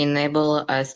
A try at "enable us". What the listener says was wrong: You still cut your enable and us. Enable us. One more time.